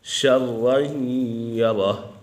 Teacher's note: یہ شین حرف اکفا میں سے ہے تو یہاں غنہ ہوگا۔